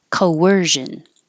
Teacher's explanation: coercion excuse me it doesn't look like there's a w so this is a hidden W or intrusive W because you're going from a rounded sound Co to an unrounded sound